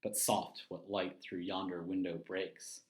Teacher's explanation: five unstressed syllables interspersed with five stressed syllables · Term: iambic pentameter